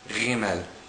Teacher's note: When there is no dot in the letter Gimel, it's pronounced Gimel. This is a sound made by causing slight friction between your soft palate in the back of your mouth and the back part of your tongue, similar to a Parisian Resh, a Parisian R.